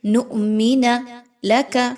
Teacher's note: حمزہ پر جزم کی علامت ہے، اس لیے حمزہ کو جھٹکا دے کر پڑھیں گے